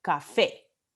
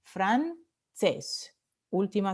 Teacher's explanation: todas estas palabras se llaman agudas porque la vocal tónica está en la última sílaba